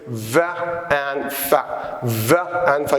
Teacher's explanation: the sound produced when the lower lip goes up to touch the upper teeth